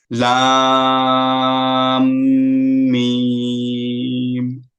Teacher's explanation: লামের পরে মিমের উপরে তাসদিদ থাকার কারণে লাম এবং মিম গুন্না হল